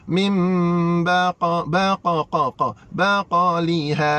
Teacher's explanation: Nah, iqlab. Tutup mulut terus.